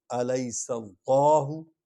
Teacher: لام کو موٹا پڑھیں گے، پر پڑھیں گے کیونکہ پیچھے زبر والا حرف آ رہا ہے۔